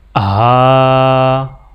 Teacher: ہا کے اوپر کھڑا زبر ہے تو ہا کو 1 الف کے برابر کھینچ کے پڑھا جائے گا